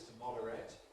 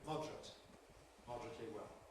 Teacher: The verb to moderate must keep three syllables always, to moderate, but the adjective moderate can compress to moderate, moderately well.